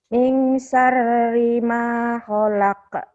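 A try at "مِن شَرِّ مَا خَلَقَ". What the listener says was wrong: Shinnya gedein.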